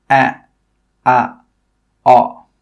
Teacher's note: they are moving from the front of the mouth at the bottom to the back of the mouth at the bottom